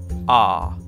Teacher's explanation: Il correspond à Lain arabe, une sorte de A du fond de la gorge, prononcé en compressant le larynx